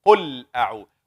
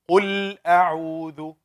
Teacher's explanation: The tongue here with the lamb should be in the makhraj, not shaking. قُلْ. I'm making it long.